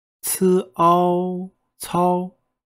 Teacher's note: is all the o has the second tone which is ascending the second character is a much flatter sound because it's in the first tone